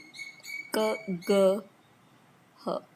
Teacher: back of the tongue touches the soft palate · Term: velar